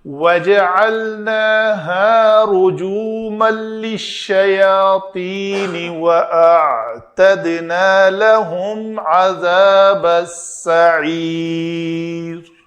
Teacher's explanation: دال کے اوپر یہاں پہ بھی میں نے قلقلہ کیا